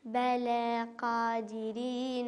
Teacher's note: هنا مد طبيعي ما تمديش فوق حركتين